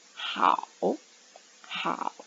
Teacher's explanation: Note, be careful with the tone mark of how. It is the falling tone, so it's going to dropping down.